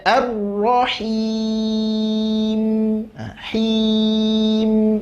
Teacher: Mim juga sifat tawasud. Nggak boleh dipotong langsung habis, tidak. Sedikit ngalirkan huruf mimnya.